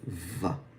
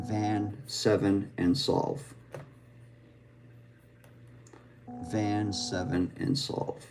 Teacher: It's a labial dental fricative. So we have our bottom lip, top tooth, the air is flowing through. So the unvoiced is the F and then we start humming while making the F sound. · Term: V sound